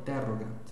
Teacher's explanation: Veja que a penúltima sílaba, ro, é breve, então a tônica vai para o anterior, interrogat.